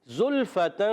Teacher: زا سیٹی سے ادا کرتے ہیں، زا میں ہمیشہ سیٹی ہوتی ہے، یہ آپ نے یاد رکھنا ہے۔